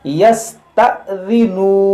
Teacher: जो अलिफ के ऊपर जज़्म है ये हमज़ा साकिना है, इसको झटका देकर पढ़ेंगे